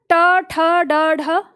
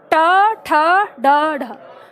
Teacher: जब आप उच्चारण कर रहे हो तो अपनी जीभ पर ध्यान दो कि जब आप ट ठ बोलते हो जीभ है कहाँ? मूर्धा है, इस स्थान को मूर्धा कहते हैं। ठीक है, जहां जीभ है, तो आपको इस स्थान से इसका उच्चारण करना है।